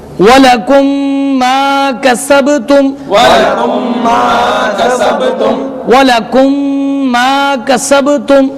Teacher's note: یہاں پر میم ساکن کے بعد میم آ رہا ہے، اس لیے یہاں پر ادغام شفوی ہوگا